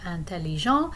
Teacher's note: if i am um using the masculine form of antellijon in that case i don't pronounce the t